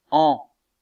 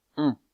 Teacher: La voyelle an est une voyelle postérieure, arrondie et nasale, mais c'est une voyelle ouverte, tandis que la voyelle on est une voyelle mi-ouverte. Elle est moins ouverte que la voyelle an.